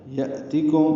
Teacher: یأتیکم حمزہ ساکن جھٹکے سے پڑھا جائے گا